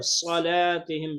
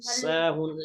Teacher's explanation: صاد کو خوب موٹا صلاتهم موٹا کریں ساهون اس کو باریک پڑھیں گے